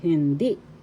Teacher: First syllable hin, second syllable di. The second syllable has the accent